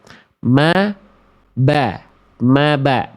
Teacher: Mim makhrajnya sama huruf ba sama-sama dari asyafatain, dari bibir. Ma ba. Mim dengan ba sama makhrajnya asyafatain.